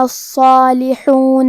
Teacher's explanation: کلمت الصالحون میں حرف الصاد ہے اور صاد حروف التفخیم میں سے ہے تو ہمیں یہ حرف کو بھاری آواز میں منہ پھلا کے ادا کرنا ہے